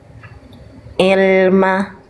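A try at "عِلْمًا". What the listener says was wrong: Ah, itu Hamzah. Itu masih il. Jangan il tapi i.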